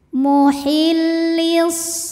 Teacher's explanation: karena alif lam menghadapi huruf Syamsiah yaitu huruf Shad cara bacanya alif lam tidak kita baca atau sebut dengan Idgham Syamsi karena bacanya dimasukkan ke Shad atau diidgamkan muhillis SH ada huruf Lin atau harfulful Lin sebab